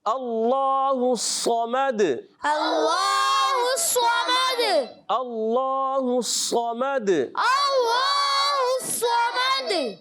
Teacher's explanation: صاد کو بھی اپنے پر رکھنا ہے، اور دال میں کلکلا کریں گے